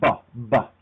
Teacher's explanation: With B, there's no puff of air, there's only vibration. And so if you did this in front of a candle, if you said buh, buh, you would not blow the candle out.